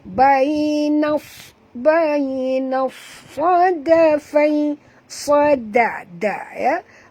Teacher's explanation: Kita masukkan bunyi nun ini terus ke dalam sad disertai dengan jud, dan kena baca tebal kerana sad adalah huruf tebal ya, huruf isti'la. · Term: idgham syamsi